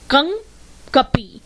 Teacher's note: नाक और मुंह दोनों से ध्वनि आवाज निकल रही है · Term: चंद्रबिंदु